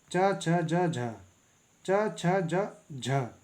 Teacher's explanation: इनके उच्चारण में जिह्वा और कठोर तालु के मध्य स्पर्श व संघर्ष होता है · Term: स्पर्श संघर्षी